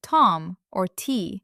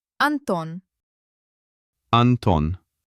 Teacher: the tip of the tongue must press tightly against the inside of the upper teeth, like a wall. And no extra air. The sound should be dry, crisp, and hard.